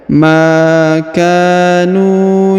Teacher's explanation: huruf Ma dipanjangkan dua harakat karena di depannya terdapat Alif mau huruf ka dipanjangkan dua harakat karena di depannya terdapat Alif